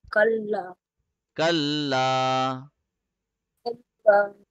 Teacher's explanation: lam has a tashdeed. That is why we are pressing the lam for 1 second. Now, this is not ghunna.